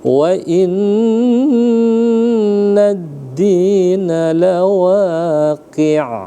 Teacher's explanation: nun ada tasydid ya, atau syiddah atau sabdu. Maka ditahan selama 2 harakat. Namanya gunnah musyaddah atau wajibal gunnah.